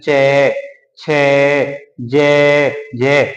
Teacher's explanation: तो ये क्या है, ये जो है छह वर्ग, वो क्या होता है, स्पर्शी व्यंजन तो है, स्पर्शी व्यंजन तो है, लेकिन उसमें क्या होता है, उच्चारण करते समय उसमें संघर्ष करना पड़ता है। यानी कि जो वायु बाहर निकलती है वो स्पर्श करते हुए संघर्ष करती है, तो बोलने में जरा थोड़ा जोर सा आता है,